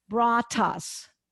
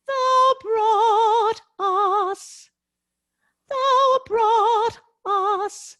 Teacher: i used a flip t not an explosive t